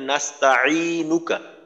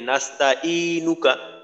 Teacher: আইনের জায়গায় এমন ভাবে বলি যে আইনের উচ্চারণটা হামজার মতই বোঝা যায়